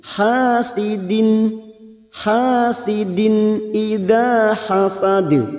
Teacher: sidin kasroh tanwin bertemu hamzah idhar halki dibaca jelas tanpa mendengung, hasidin, hasidin idza hasad, idza hasad, da fathah bertemu alif 2 harokat, hasad huruf dal lagi yang mati di akhir kalimat dan dibaca waqaf, kita pantulkan, namanya qalqalah kubra. · ha fathah diikuti alif 2 harokat